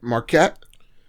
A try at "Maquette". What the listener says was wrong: You added an R, just Maquette.